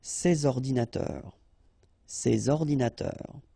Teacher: so you should make the liaison between S and O